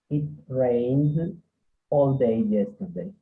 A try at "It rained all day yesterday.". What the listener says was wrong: A little bit faster. Come on.